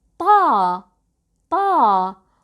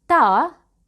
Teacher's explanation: They both have the same articulation point, but when we pronounce ta, we lift the back of our tongues